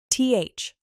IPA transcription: θ